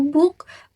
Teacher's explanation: Sedangkan bunyi beh pada kata book merupakan voiced sound karena pita suara bergetar saat bunyi diucapkan.